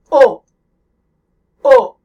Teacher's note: The second kind of French O involves rounding your lips as you say the O sound